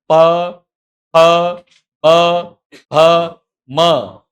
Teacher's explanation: બે હોઠ ભેગા થાય ને છૂટે ત્યારે વ્યંજનો બોલાય · એટલે ટ ઠ ડ ઢ ણ પેઢા પર, ત થ દ ધ ન દંત્ય. બે હોઠ ભેગા થઈને છૂટે ત્યારે વ્યંજનો બોલાય. પ ફ બ ભ મ. બસ બોલવાની ખબર પડી જાય કે હોઠ ભેગા થાય છે, એને સંસ્કૃતમાં કહેવાય ઓષ્ઠ્ય.